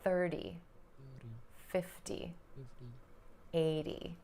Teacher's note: When I pronounce the tens numbers, the T sounds more like a D, or a flap T, or the American T.